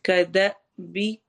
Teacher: حمزہ کے اوپر جب بھی جزم آتی ہے، سکون آتا ہے، تو وہاں پہ ہم جھٹکا دے کے پڑھتے ہیں۔